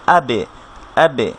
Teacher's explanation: বায়ের সাথে যখন সাকিন হবে, আমরা বারবার বলছি যে সাউন্ডটা কলকলা হবে, অর্থাৎ সাউন্ডটা আপনার রিভার্ভ টাইপের হবে, আবার ফিরে আসবে আবে, আবে।